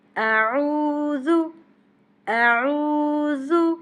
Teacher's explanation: اعوذ، اعوذ، آ کو کھینچنا نہیں ہے، عین کو حلق سے نکالنا ہے، عین کو کھینچنا ہے، ذال کو نرمی سے پڑھنا ہے